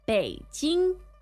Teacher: That's third tone, first tone.